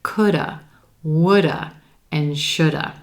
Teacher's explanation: that word have will reduce even further to become just the schwa by itself